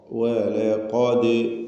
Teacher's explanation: ദാലിൻ്റെ സുക്കൂനിന് ഖൽഖല സൂറ നൽകി ശബ്ദം ചലിപ്പിക്കണം. ദാലിന് ഹറക്കത്ത് പോലെ അതിൻ്റെ സുക്കൂൻ വ്യക്തമാക്കണം.